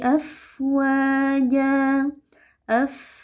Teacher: Jadi ketika kita baca terutama saat dia sukun kita alirkan nafas dan juga suara.